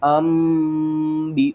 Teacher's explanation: نون ساکن یا تنوین کے بعد اگلا حرف با آ جائے تو ہم نون کی آواز کو میم کی آواز میں بدل کر پڑھتے ہیں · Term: اقلاب